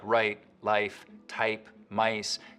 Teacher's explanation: also affects the price bowel in the same way so that the starting point of words like right life type mice can get raised too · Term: Canadian raising